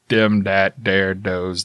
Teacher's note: we tend to say things like dropping our th's and they become a d